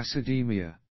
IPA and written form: æsɪ'di:mɪə (acidaemia)